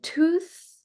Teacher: my tongue is behind my teeth when I'm saying tooth. And I'm drawing attention because I know from my consonant analysis that this is a novel sound.